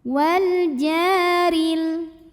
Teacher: Ja madtobi'i dhahiri karena ada alif didahului baris fathah, maka jimnya panjang 2 harokat. Wal jaril. Huruf ra dibunyikan secara tarqiq karena barisnya kasrah, maka bacanya tipis.